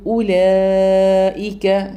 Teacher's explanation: നീട്ടിയിട്ട് മദ് ഉച്ചരിച്ചുകൊണ്ട് പറയാം അടുത്തത് വരുന്നത് ഉലായിക്ക ഇവിടെ നമുക്ക് മദ് വന്നിട്ടുണ്ട് നാല് മുതൽ അഞ്ച് ഹറ വരെ നീട്ടിയിട്ട് തന്നെ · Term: മദ് മുത്തസിലാണ്